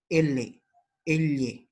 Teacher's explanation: Lateral, el aire ingresa y roza los laterales de la cavidad de la boca